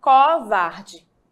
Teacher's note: as vogais que estão antes da sílaba tônica seriam aí pronunciadas de maneira aberta · Sílaba tônica é a sílaba mais forte. Então, existe uma tendência na região do Nordeste de que a pronúncia dessa vogal aqui, o, que está antes da sílaba tônica, seja uma pronúncia aberta, portanto seria covarde, tá?